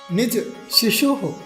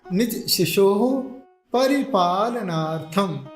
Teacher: विसर्ग है आधा ह जैसा उच्चारण निकलेगा